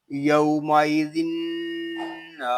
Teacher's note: یہاں نون مشدد ہے اور نون مشدد میں ہمیشہ غنہ ہوتا ہے، اس کو غننے کے ساتھ ہی پڑھیں گے. نون الف زبر نا، یومئذ نا.